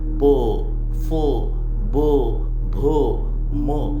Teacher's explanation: प फ ब भ म हे औष्ठ वर्ण आहेत